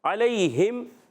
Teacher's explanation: لام یا زبر لئی. یا لین ہے، یا ساکن سے زبر یا لین، یہ بھی نرمی سے ادا ہوگا، کھینچیں گے نہیں. 2 حرف ادا ہوں گے.